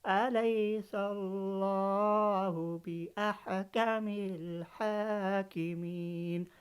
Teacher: جلالہ سے پہلے زبر آیا تو ہم موٹا پڑھیں۔